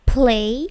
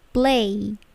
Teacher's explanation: Hati-hati, P-nya tidak plosif. Tidak semua P itu plosif ya. Bukan play, tetapi play.